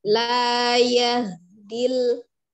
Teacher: hati-hati ha sukunnya tidak dipantulkan